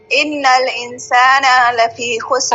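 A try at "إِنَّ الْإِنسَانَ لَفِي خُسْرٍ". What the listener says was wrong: ابھی بھی کھینچا ہے تھوڑا سا، نہ کھینچیں. نہ لفی خسر، نہ لفی خسر، ان الانسان لفی خسر.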